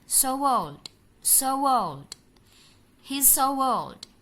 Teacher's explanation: Jadi ada penambahan bunyi w-nya.